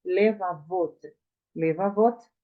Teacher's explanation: A sílaba tônica agora está onde? No final. · Le, está aberta, acrescentou-se o sufixo, a primeira vogal será reduzida a um shivá